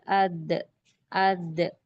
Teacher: حمزہ دال زبر اد، اد، جہاں پر آخری میں آواز آ رہی ہے وہی اس کا مخرج ہے، یعنی جب ہم دال پڑھیں گے، دال کی آواز آئے گی تو اس وقت اس پکچر پر غور کیجئے، زبان کی نوک اور اوپر دانتوں کی جڑ، یعنی زبان کی نوک اوپر دانتوں کی جڑ کو جب ملتی ہے تب دال کا مخرج ادا ہوتا، دال کی آواز پیدا ہوتی، اور دال کو باریک کھینچ کے پڑھیں گے، دال، دال، اد، اد، ایسے۔